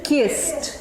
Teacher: The pronunciation is T, and this thing has only one syllable.